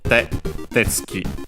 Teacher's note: tetsuki on its own is accented on the first syllable